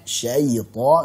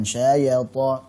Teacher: ya-nya syayta, jangan syayata, jangan seperti berharakat fathah